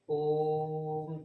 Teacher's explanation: तो प्लुत स्वर में आपके दो आपके मात्रा से अधिक की समय लगती है या हम ऐसे भी कह सकते हैं तीन मात्रा की समय लगती है। ये कहना ज्यादा उचित होगा कि दो मात्रा से अधिक की समय लगती है